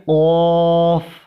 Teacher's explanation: قاف کو ادا کرنے کے لیے آپ کو اپنی زبان کو موٹی کرنی ہوگی، یعنی کہ اس کو بھی پر پڑھیں گے